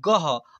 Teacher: ग के लास्ट में यहां पर डबल विसर्ग है तो इसे अह के रूप में उच्चारण कर रहे हैं